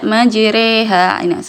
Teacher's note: huruf huruf Fatha yang dikasrahkan tapi kasrahnya bukan di I tapi di e majreha sini kan tulisannya majroha ya tapi dibaca majreha eh di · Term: imalah